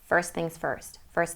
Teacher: usually that T in the word first gets dropped and then it connects to the next consonant better and more easily it flows and sounds more smoothly first things first first